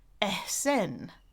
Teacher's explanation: she said I wasn't putting enough aspiration on the H in her name